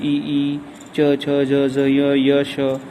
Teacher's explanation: जब हम बोलते हैं इनको तो हमारी जीभ का प्रयास किधर जाने का होता है? तालु भाग की तरफ जाने का प्रयास होता है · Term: तालव्य वर्ण